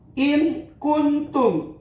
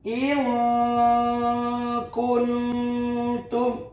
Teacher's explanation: Nah, maka ini adalah ikhfa. Jangan jelas, jangan dimasukkan, tapi bunyi N ini kudu disamarkan.